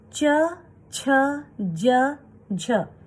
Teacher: क वर्ग के बाद च, छ, ज, झ, जिनका उच्चारण स्थान तालव्य, तालु, जो ऊपर वाला है। हमारी जब हम च, छ, ज, झ बोलते हैं तो जीभ हमारी ऊपर के पार्ट को टच करती है